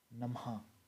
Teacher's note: जब जैसे हम डोट के पास पहुंचते है तो हमारे मुह से ह की आवाज निकलती है जैसे कि नमः ठीक है म के बाद ह तो है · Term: विसर्ग